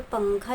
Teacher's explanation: न की आवाज बिल्कुल भी नहीं सुनाई देना चाहिए। जो नून है उसकी आवाज को हम नाक में छुपाएंगे।